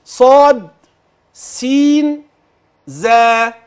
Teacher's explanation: طرف اللسان مع اطراف الثنايا الاسنان السفلى